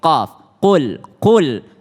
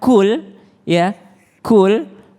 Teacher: Nah, qul huwallahu ahad dimulai dengan huruf qaf ya. Qaf itu beda dengan kaf ya. Ketika qaf itu lebih tebal sedikit. Qaf, qul artinya katakan.